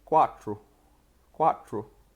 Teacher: The second would be TR, which is a really distinctive part of Sicilian. And it's kind of like the TR in the word tree in English. So you put your tongue just a little bit back.